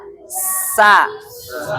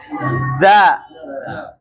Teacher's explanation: suara keluar dari celah yang sempit antara ujung lidah dengan 2 gigi seri atas dan bawah. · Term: sifat sofir